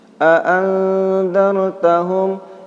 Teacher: itu ikhfa bacaannya samar-samar dan didengungkan